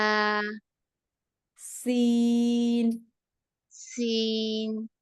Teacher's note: আর হচ্ছে সিনের মাখরাজটা হচ্ছে আপু নিচের সাথে সিনের মাখরাজটা হচ্ছে জিহ্বার আগা দুই দাঁতের নিচের দুই দাঁতের আগা বা পেটের সাথে লাগিয়ে সিনটা উচ্চারিত হয়